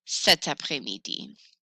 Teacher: I have added a T for liaison purposes to make it sound smooth.